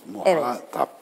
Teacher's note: Muhatap tek teyledir ve ortadaki a sesi uzun, sondaki uzun değil. Yani muhatabım derken muhatabım değil, muhatabım, muhatabına şöyle söyledi gibi.